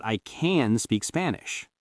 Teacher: when you're saying you can do something in the middle of a sentence, it's okay for it to be soft and reduced.